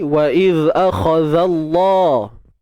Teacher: Huruf zal yang mati kita keluarkan sedikit hujung lidah.